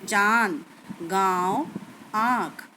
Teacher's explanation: अनुनासिक का उच्चारण नाक और मुंह दोनों से किया जाता है